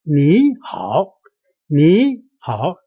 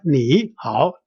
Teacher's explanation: when 2 third tone words connecting to each other, the first one, 你, should be changed to a second tone. So 你, instead of 你, it is read as 你好, 你好.